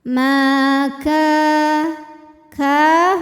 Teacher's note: cara bacanya mim kita panjangkan dua harakat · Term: Mad thiiiri